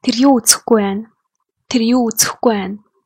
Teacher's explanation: In spoken Mongolian, when we speak fast, we tend to drop B.